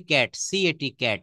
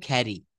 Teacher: আমরা ক বলবো না, আমরা সর্বদা খ বলবো।